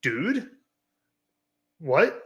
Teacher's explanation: Like a question, like, dude, that's a second tone.